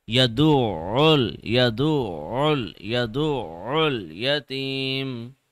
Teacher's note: should be continuous it should not pause it should not stop you are just pressing the ayin for one second because of its shadda but still the sound is continuous